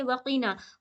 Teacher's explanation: काफ को मुंह भर के पढ़ी जाती है